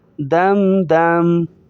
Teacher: رکیں گے تو میم کی زبر کو ظاہر نہیں کریں گے